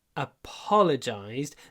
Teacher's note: Ударение на первый «о», apologized, но все равно в конце у нас достаточно много «й».